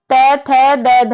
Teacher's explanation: त थ द ध यह सब कहां से बोले जाते हैं दंते से बोले जाते हैं